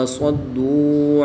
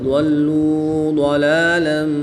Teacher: دال کو باریک پڑھیں گے اور دوات کو پر یعنی موٹا پڑھیں گے